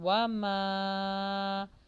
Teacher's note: واو پر ہونٹوں کو گول کیجئے اور یہاں پر مد آ رہی ہے، اس کو لانگ کیجئے